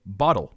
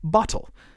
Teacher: if you live in America like me you probably actually say bottle with a duh sound